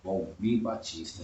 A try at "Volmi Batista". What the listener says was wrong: Volmi, sem o R, né? Volmi.